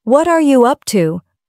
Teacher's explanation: What are you up to becomes what you up to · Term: Linking words